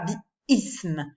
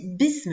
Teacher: je ne vais plus prononcer la hamza comme un coup de glotte. Je vais dire bism. · je fais tout de suite la liaison entre le bi et la lettre qui suit la hamza